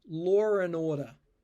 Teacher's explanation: I have reduced the and to just and I have put an ER to link law to order